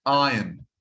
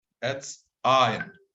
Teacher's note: There is no R here. Do not pronounce the R.